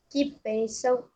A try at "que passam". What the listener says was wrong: Não. No lugar do A, você bota o E. Que passam.